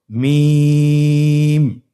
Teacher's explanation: দুই ঠোট চেপে ধরে আমরা উচ্চারণ করব।